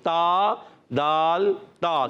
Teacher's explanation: اور تا کا مخرج بتا دیتے ہیں. زبان کا سرا اوپر کے دانتوں کی جڑوں سے لگتے ہیں تو ادا ہوتے ہیں 3 حروف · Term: حروف نطعیہ